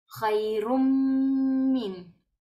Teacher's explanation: como si fuera una sola dhamma seguida de mim shedda.